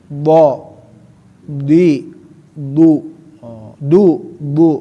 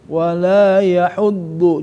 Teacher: sifat naik lidahnya ke atas dan sifat al-itbaq lengket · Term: sifat al-istila